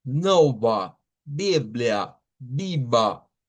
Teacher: la a que se usa aquí al final de las palabras no es con la boca abierta hacia adelante, es con la lengua como hacia en medio. Uh, Nova, Biblia, viva.